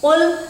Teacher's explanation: Qul karena bukan ka tetapi ko. Qul u-nya panjang. 2 harokat karena ada huruf waw sukun setelah dhamma.